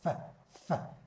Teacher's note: مش هتحس بأي فايبريشن هنا ولا اهتزاز، دي معناها voiceless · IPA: /f/